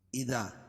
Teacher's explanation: اس لیے کہ الف سے پہلے زبر ہے، دال پر الف مدہ ہوگا، اس کو ایک الف کے برابر کھینچ کے پڑھیں گے